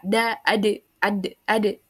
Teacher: tidak ada napas udaranya ee suaranya juga tertahan gitu tidak mengalir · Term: syiddah